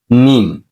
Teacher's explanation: দুই ঠোঁটের শুকনো অংশ থেকে কি উচ্চারিত হয়